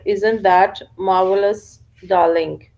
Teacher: individuals who seem to have no ra sound in isn't that marvelous, darling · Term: omission of ra sound